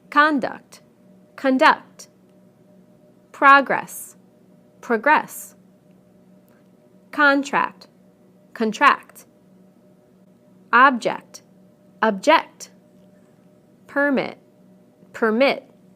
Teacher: we stress the first syllable in the nouns and the second syllable in the verbs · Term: different word stress